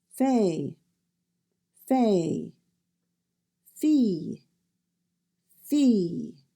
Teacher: this is a voiceless sound and comes from the front of your mouth your throat will not vibrate when you make that sound